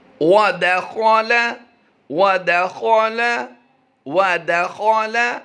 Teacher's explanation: خا کی ادائیگی پر کی ہے، باقی ہم نے کسی کو پر نہیں کیا